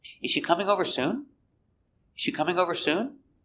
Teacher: coming over is a phrasal verb we're going to stress both words